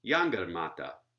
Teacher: Four syllables, yangarmata, where you can hear there's a primary stress on the first syllable and a secondary stress on the third syllable